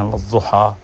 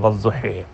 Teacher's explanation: یا کو الف اور یا کی درمیانی آواز میں پڑھو، اور وہ بنتی ہے ہا اور ہی کی درمیانی آواز والضحی۔